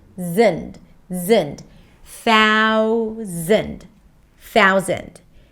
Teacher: So if you feel that you're saying something like Southend, like switching the sounds, so concentrate on the TH first. Hold it out. Thou, long ow sound, thou, and then bring the tongue in for the Z sound.